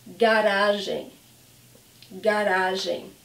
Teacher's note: It's a great word because you can see the hard G of ga and then the soft G of gen.